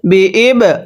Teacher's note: বায়ে যদি সাকিন হয় কলকলা করে পড়তে হয়